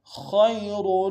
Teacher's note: خا کو یا کے ساتھ ملانا موٹا ادا کرتے ہوئے، یا لین ہے بغیر کھینچے پڑیں گے